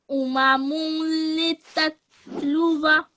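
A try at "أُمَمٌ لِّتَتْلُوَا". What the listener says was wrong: Now, I think last time we said that when there is a tanween, like here, this one, you don't make the noon sound. You don't say umamunli because there won't, only if there is you won't make it, basically is what I'm trying to say, if after it there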